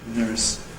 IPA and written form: nɝːs (nurse)